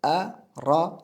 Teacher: Ana shunday harflardan biri ro harfi. Agar ro harfining tepasida fatha keladigan bo'lsa, ro deb o'qiymiz, ra deb emas.